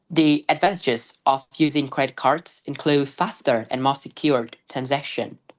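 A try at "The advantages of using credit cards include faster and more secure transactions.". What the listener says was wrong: You're kind of jumpy. You need to stretch your pronunciation out a bit more. The advantages of using credit cards include, I don't say include and then I stop. I say include. That's a stretch, right? Because I'm thinking.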